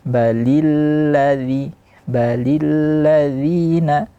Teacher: Balil di sini tidak boleh dia masuk ke hidung